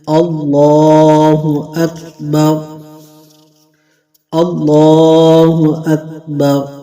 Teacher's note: اللہ عز و جل کی جو لام ہے اس کو پر پڑھنا ہے، اللہ اکبر نہیں پڑھنا، اللہ اکبر۔ را کو بھی پر پڑھنا ہے اور کاف کو باریک پڑھنا ہے